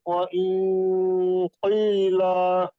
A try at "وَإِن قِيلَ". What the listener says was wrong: মা একটু বেশি টান দিয়ে বলেন দেখি এটা লাস্টেরটা। ইয়, ইং, পার্থক্য এটাই, ইয় হবে, ইয়